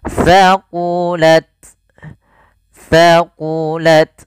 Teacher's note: jangan banyak desisannya. Sedikit aja hamas ya